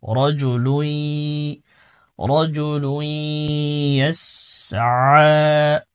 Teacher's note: লামের উপর তানভিন রয়েছে, তানভিনের পরে ইদগাম বা গুন্নার হরফ ইয়া আছে, এজন্য গুন্নার সাথে মিলাইতে হবে